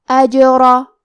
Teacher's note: کلمت اجرا میں حرف الجیم پہ جزم ہے، لہذا ہم جیم کو قلقلہ سے پڑھیں گے، اور قلقلہ کا معنی ہے حرف ساکن کو ہلانا، تو ہم جیم کو ہلاتے ہوئے یہ کلمہ کو پڑھیں گے